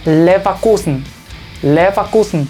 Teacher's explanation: A pesar de eso, el sonido, o sea, F, se mantiene, pero no es tan fuerte